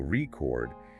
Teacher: shift the stress to the second syllable re chord, it becomes a verb, the act of recording something